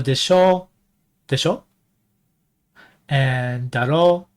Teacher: I had a rising intonation when I said desho and daro